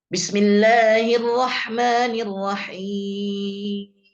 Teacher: Seharusnya cukup di 6 harokat, tetapi dilebihkan dari 6 harokat. Ini ta'assuf.